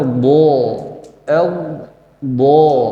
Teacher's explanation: letaknya di tepi lidah ditempel ke gigi geraham atas enggak boleh kita nyimpan huruf Dod di bagian ujung lidah kita Dal yang ditebalkan jadinya do do salah yang benar do do